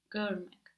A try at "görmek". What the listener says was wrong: Good.